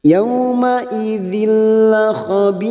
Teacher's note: Di sini namanya idgham bila gunnah karena ada kasrah tanwin, kasrotain yang bertemu lam, namanya idgham bila gunnah. Nun sukun atau tanwin yang bertemu dengan 2 huruf yaitu huruf lam dan huruf ra, maka siap masuk pada huruf depannya, hanya masuk tanpa mendengung